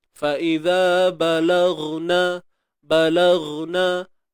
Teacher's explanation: Huruf ghain. Mana duduknya? Di hujung kerongkong. Sama pula tempatnya dengan huruf kha.